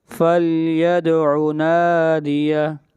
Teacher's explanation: آگے چلیے اگلی آیت، فَلْيَدْعُ نَادِیَہ، دال کے اوپر قلقلہ، فَلْيَدْعُ نَادِیَہ، نا کو لمبا کریں گے، ایک الف کے برابر، مد اصلی ہے